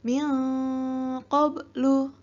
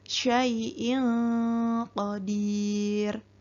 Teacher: Ya, jadi apabila kalian menemukan huruf nun sukun atau fathatain, kasrotain, domatain bertemu dengan salah satu huruf ikhfa yang 15 ini, maka nun sukun atau tanwin tadi harus dibaca samar dan didengungkan kurang lebih 2 harokat. Contohnya Di sini ada nun sukun bertemu dengan huruf qaf.